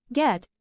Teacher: The back of the tongue contacts the velum just like in the voiceless velar plosive, but the vocal cords vibrate, resulting in a voiced sound.